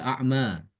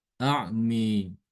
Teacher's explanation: Kalau imam hafaz kan dibaca a'ma. Ama ini nanti kalau kita membaca Imam Subah dibacanya A'mi. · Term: mengimalahkan